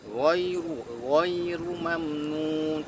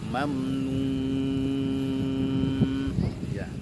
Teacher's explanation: Nah, ghairu mamnun, perhatikan ghai jangan ghai tapi ghai, ghainya tebal ya, ghainya tebal, ru-nya tebal juga